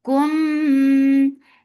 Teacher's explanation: Kum for dhamma circle lips. This is ikhfa shafawi. So keep the sound in your nose because every ikhfa has gunna.